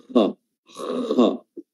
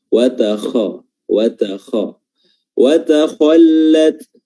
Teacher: makhraj huruf kha adalah adnal halq atau tenggorokan yang terdekat atau tenggorokan bagian atas, yakni yang terdekat dari lidah